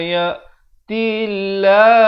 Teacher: Lafz jalalah dibaca nipis 2 harakat